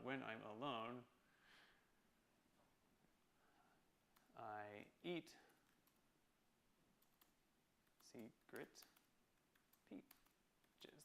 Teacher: I guess it's kind of the awkward stress on the lone part of alone